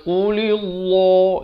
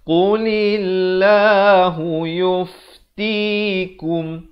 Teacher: Lafz jalalah ni dibaca nipis 2 harakat. Jangan qulillah, itu jadi tebal, salah.